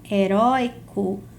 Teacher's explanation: heróico é uma paroxítona em que o ditongo aberto está na sílaba tônica